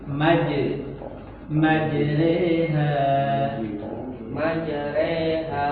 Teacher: huruf jim ingat jangan ada desis